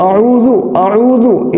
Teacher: تو اس کو دال پڑھیں گے بالکل باریک